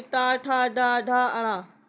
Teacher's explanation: जिन व्यंजनों के उच्चारण में जीभ का लगभग मूर्धा को स्पर्श करके झटके से वापस आता है। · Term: उच्छिप्त व्यंजन